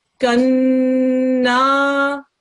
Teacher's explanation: we've got to do a 2-second nasal sound, the gunna on the noon.